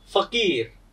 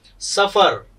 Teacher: याचा उच्चार आपण खालचा ओठ वरच्या दातांना चिकटवून स म्हणल्यासारखं आपण फ म्हणतो, स म्हणल्यासारखं फ म्हणतो. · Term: लॅबिओ डेंटल फ्रिकेटिव्ह